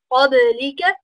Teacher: Ba is from huruf qalqala, so you need to make sure you bounce it.